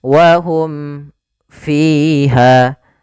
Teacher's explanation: izhar syafawi jelas suara mimnya dan tidak boleh ditahan wahum fiha ya tidak boleh saktah juga misal wahum fiha enggak